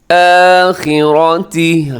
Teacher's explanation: خا موٹا ہے، را بھی موٹا ہے